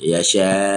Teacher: Pertama dia adalah mad muttasil. Panjangnya empat harakat.